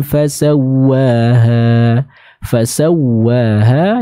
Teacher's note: huruf wow tasydid dia dibaca dengan cara diberi hentakan atau tekanan